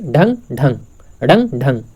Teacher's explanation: जो जीभ है एक झटके के साथ तालू को छूकर तुरंत नीचे आती है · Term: उत्क्षिप्त व्यंजन